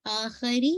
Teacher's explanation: आखिरी री को आपने रा की कसरा शार्प रखनी है, बारीक करनी है।